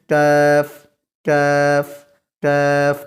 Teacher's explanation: باریک بھی پڑھنا ہے اور زبان کا پچھلا حصہ اٹھا کر اس کے مد مقابل نرم تالو کو بھی لگانا ہے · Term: کاف